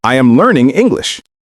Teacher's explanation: Voice falls at the end. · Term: falling intonation